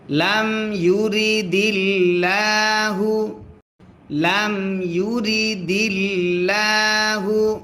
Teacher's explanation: আল্লাহ শব্দের লামের ডাইনে জের যদি হয় আল্লাহ শব্দের লাম তখন পাতলা করে পড়তে হয়